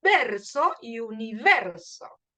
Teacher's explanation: La E es la que suena fuerte y lo que sigue después es erso o rso. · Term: sílaba tónica